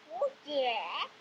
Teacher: the first syllable indeed has a rising pitch, which goes from roughly the mid area of the child's pitch range to a much higher one